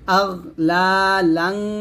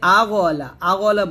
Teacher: তো গয়ন কিন্তু কলকলা করা যাবে না।